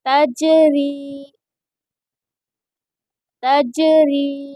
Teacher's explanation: تا جیم زبر تج، را یا زیر ری، تجری تجری۔ دیکھیے جیم میں قلقلہ ہوگا اور یہاں پر را کو باریک پڑھیں گے، تجری۔ اور یہاں پر یا مدہ ہوگا کیونکہ یا ساکن سے پہلے را کے نیچے زیر ہے، اس لیے یہاں پر یا مدہ ہوگا اور اسی لیے اس کو تھوڑا کھینچ کر پڑھیں گے را کو۔